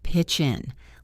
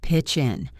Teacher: Connect the ch sound in pitch to the in.